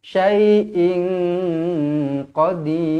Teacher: ing tanwin tak selari bertemu dengan qaf, ikhfa hakiki, dengung dua harakat